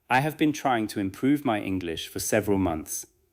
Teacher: The strong words may be trying, improve, English, and several months.